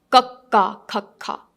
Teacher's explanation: So the sound comes from the back of your mouth.